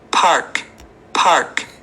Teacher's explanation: você percebe que ele não enrola muito a língua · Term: pronúncia Americana